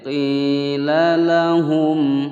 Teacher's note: lahum mim sukun bertemu hamzah, dibaca jelas hukum bacaan izhar syafawi.